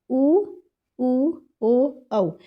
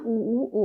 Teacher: अब हमारा मुंह हमारे जो लिप्स हैं एकदम वृत्त के आकार के हो जा रहे हैं। गोल हो जा रहे हैं। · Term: वृत्त मुखी स्वर